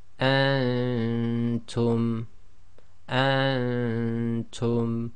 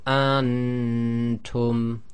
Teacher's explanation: The noon shouldn't be clear, and that's caused by keeping your tongue in the position of the next letter.